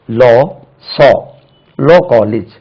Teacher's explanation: Actually இந்த sound பலபடியும் தமிழ்நாட்டில் ஆ என்று தான் சொல்றோம், லாங் வாவல்.